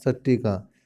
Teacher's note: त के बाद ट आए तो ट वर्ग में बदल जाता है